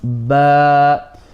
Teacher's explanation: the ba we know it comes from the lips, but the a part, that comes from the empty space of the mouth and the throat